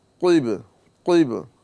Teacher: اب یہ قوف کے نیچے زیر ہے، لیکن یہاں پر بھی یہ قوف حروف مستعلیہ میں ہونے کی وجہ سے پر پڑھا جائے گا